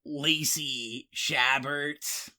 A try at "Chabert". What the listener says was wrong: I think you may have mangled it. I believe the T is silent, but anyway, I don't know.